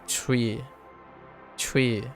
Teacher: there's a t sound, a subtle t sound, but then it becomes we